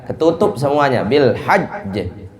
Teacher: Makhrajnya itu ketutup semuanya. Sehingga tidak bisa keluar. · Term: syiddah